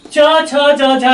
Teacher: जिह्वा ऊपर उठ जाती है, तालु के पास पहुंच जाती है, वहां का स्पेस सकरा हो जाता है और प्राणवायु वहां बाधित होती है।